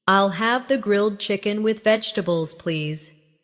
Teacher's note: Pay attention to the rhythm. The main stress is on grilled chicken and vegetables.